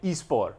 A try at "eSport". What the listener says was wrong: eSport. No T. Get that T out of here.